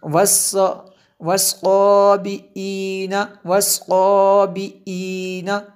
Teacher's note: اس کو حمزہ پڑھنا ہے، آئین نہیں پڑھنا ہے